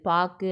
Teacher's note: சொல்லின் இறுதியில் வரும்போது பாக்கு அப்படின்னு சொல்லும்போது லாஸ்ட்ல கூ இருக்கு இல்லையா அப்ப இறுதியில வரும்போது ஒரு மாத்திரைக்கு பதிலாக அரை மாத்திரை அளவே ஒலிக்கிறது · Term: குற்றியல் உகரம்